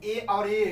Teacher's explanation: ए और ये दोनों क्या होता है, कंठ और तालु दोनों से इसका उच्चारण करने में दोनों का प्रयोग किया जाता है, तो इसलिए इसे कहा जाता है कंठव्य तालव्य, यानी कंठ और तालु दोनों के प्रयोग से ए और ए का उच्चारण स्थान क्या होगा, कंठ और तालव्य होगा, क्योंकि इन दोनों के उच्चारण में कंठ और तालु दोनों का प्रयोग किया जाता है।